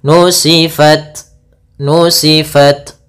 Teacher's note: Ta itu adalah syiddah. Syiddah itu tertahannya suara. Kemudian hames mengalirnya suara.